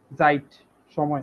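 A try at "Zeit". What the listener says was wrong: সাইট, হ্যাঁ এস এর উচ্চারণ জেড এর তো, সাইট।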